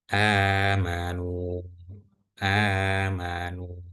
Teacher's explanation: Jadi di sini nunnya tetap dibaca dua harakat walaupun huruf madnya itu ada dua.